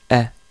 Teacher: Avec la fatha, on prononce un E et non pas A. Attention, donc c'est un A léger, E.